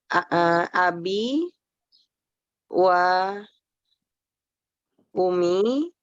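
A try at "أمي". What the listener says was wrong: Mbak Umi, ini ada tasdidnya ya.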